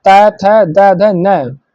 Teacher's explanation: तो ना जो हमारा है दंत से बोला जाता है। तावर्ग त, थ, द, ध, न के सभी व्यंजन दंत व्यंजन कहलाते हैं, क्योंकि इनके उच्चारण में जिह्वा दांतों को स्पर्श करती है